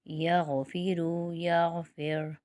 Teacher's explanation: یہاں پر را جو ہے باریک پڑھا جائے گا کیونکہ را سے پہلے فا کے نیچے زیر ہے۔